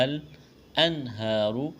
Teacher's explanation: ہا کے اوپر کڑا زبر ہے، ایک الف کے برابر کھینچنا ہے، را کے اوپر پیش ہے، موٹا کرنا ہے